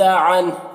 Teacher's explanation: یہاں پر وقف کریں گے تو ہا کا جو پیش یہ سکون سے بدل جائے گا